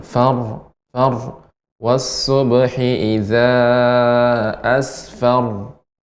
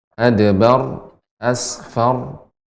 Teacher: huruf ra yang dibaca dengan tebal, tafkhim ketika di akhir